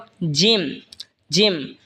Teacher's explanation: জিহবার মধ্যখান তার বরাবর পরে তালের সঙ্গে লাগে উচ্চারণ হবে জিম